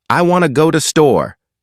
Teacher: The words blend together. The to becomes da. The want to becomes wanna.